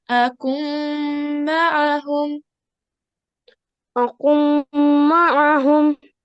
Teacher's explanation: So remember, as we're doing the rule of idgham and naqis today, we need to remember as we have noon sakin, which is the blue letter over here, and then we have our mim mushaddad. This is where we do our assimilation, meaning idgham, and we'll be doing 2-second nasal sound.